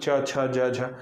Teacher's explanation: आपकी जो जीभ है वो कंठ के थोड़े आगे में टच करेगी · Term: च वर्ग